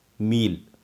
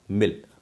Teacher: पहले में हमने मात्रा को खींच कर बोला मील, और दूसरे में हमने उसको जल्दी से बोला मिल